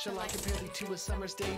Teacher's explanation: unstressed stress five times slow iambic